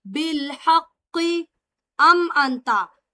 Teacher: میم ساکن کے بعد حمزہ ہے، اظہار شفوی ہوگا